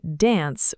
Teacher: In American English, most people say dance with a flat short A sound · most people say dance with a flat, short A sound, almost like the A in cat. But in British English, especially Southern British English, it's pronounced dance with a longer, deeper A sound, almost like the A in father.